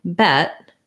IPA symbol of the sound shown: ɛ